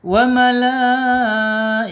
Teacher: Alirkan ya ketika dia sukun karena sifatnya dia hamas. Kalau tidak dialirkan berarti cara bacanya perlu diperbaiki karena salah ya.